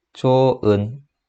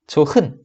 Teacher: 자연스럽게 발음하면 히읗 소리가 굉장히 약해집니다. 그래서 사라지게 된 거예요. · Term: 히읗 탈락